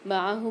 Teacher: معہم میں عین کی آواز واضح ہونی چاہیے، اس کو الف کی طرح نہیں پڑھیں گے